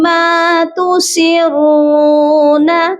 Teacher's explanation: سین کو را کے ساتھ سختی سے ملایا جائے گا کیونکہ را کے اوپر تشدید ہے